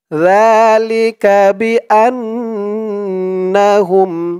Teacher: সাথে এক আলিফ টান খাড়া জবর আর এখানে জালের উচ্চারণটা একদম নরম পাতলা করতে হবে জিহ্বার মাথা উপরের দাঁতের মাথার সাথে লাগবে জালের উচ্চারণটা করার সময় লিকাহুম বি হামজা দিয়ে নুন ধরবে এখানে